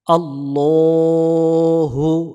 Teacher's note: আল্লাহ শব্দের ডান পাশে জবর অথবা পেশ হলে আল্লাহ শব্দের লামকে মোটা করে পড়তে হয় জবরে আকার পড়া যায় না অর্থাৎ লা পড়া যাবে না ল